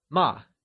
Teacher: ma meaning scold carries the falling tone also known as the fourth tone